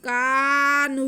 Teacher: کاف اور نون کو بالکل ایک جیسا ہم کھینچیں گے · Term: مدہ